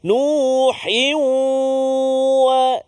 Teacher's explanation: ma'al ghunna, dengung 2 harakat. Masukkan bunyi tanwin ke dalam waw dengan dengung 2 harakat.